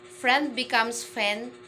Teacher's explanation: speakers keep only the first consonant and delete the rest to simplify the consonant cluster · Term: simplification of consonant cluster